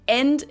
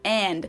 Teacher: We just use the German e sound instead of an English a.